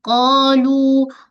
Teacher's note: Qa dengan lu tempoh yang sama. Sama-sama mad asli. Alif sebelumnya baris atas dan waw sebelumnya baris depan.